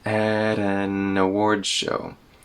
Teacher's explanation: Now here the N in an connects to awards.